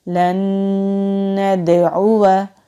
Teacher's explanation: दाल साकिन है तो दाल साकिन हो तो भी कलकला होता है · नून साकिन के बाद नून है तो यहाँ पर तशदीद वाला नून है तो ज़्यादा ज़ोर हम इस तशदीद वाले नून पर देंगे। नून साकिन की आवाज़ को इस नून में मुदगम कर देंगे यानी कि जज्ब कर देंगे। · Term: इदगाम